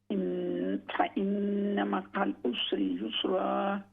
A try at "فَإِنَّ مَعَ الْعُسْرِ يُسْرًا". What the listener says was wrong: रा को मोटा करके पढ़ें। रा पर जब ज़बर होता है तो रा मोटी पड़ी जाती है। फ़इन्न मअल उसरि युस्रा, इन्न मअल उसरि युस्रा।